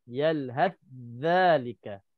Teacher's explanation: Tha masuk ke dalam za. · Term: idgham mutajanisain